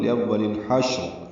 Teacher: شین ساکن ہے، اس پہ ہمس ہے، تفشی ہے